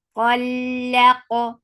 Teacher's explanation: Lam is light and attached qaf. Qaf will get sifa of qalqala and qaf is heavy.